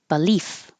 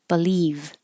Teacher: if the final sound in the word is voiceless, F is voiceless, you don't have any vibration in your throat, then the vowel before will be a little short. And if the final sound is voiced, V is voiced, then the vowel before will be a little long.